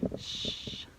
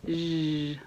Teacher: I did the whole thing where I was like, do this, say sh, unvoiced, and then zh, voiced. And you can feel your voice box turn on